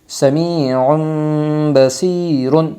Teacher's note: اقلاب ہوگا دو پیش تنوین کے بعد با آئی ہے، اس لیے دو پیش تنوین کو میم سے بدل کر غنہ اور اخفا کے ساتھ پڑھے گی۔